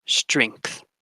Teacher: the word strength where you have three consonants in the onset and three consonants in the coda